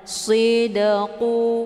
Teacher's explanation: Cara bacanya, dalnya dipantulkan dengan pantulan ringan. Sidqu, keluar bunyi de, sekedar saja, tidak melebihi. Ya, jangan terlalu kuat dipantul. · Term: qalqalah sughra